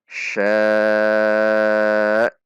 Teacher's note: Ada hentakan. Itu menandakan ada hamzah sukun. Kalau kita baca sya' saja, tidak ada hentakan, tidak terhentak, tidak tertahan, maka hamzahnya tidak terbaca.